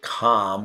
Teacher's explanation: some people say calm without the L Sound